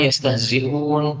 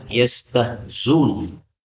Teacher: Kemudian ayat yang kelima yastahzi'un boleh dibaca yastahzun, berarti dilenyapkan hamzahnya sehingga zainnya menjadi dhammah